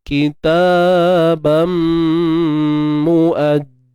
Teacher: Kena dengung. Yang sempurna kadar 2 harakat. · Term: Idgham bi gunnah kamil